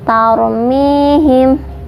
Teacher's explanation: dibaca tebal karena ada ro sukun, huruf sebelumnya berharokat fathah. Tadi sudah saya jelaskan, ro sukun itu dibaca tebal ketika berhubungan dengan fathah ataupun domah, dibacanya tebal.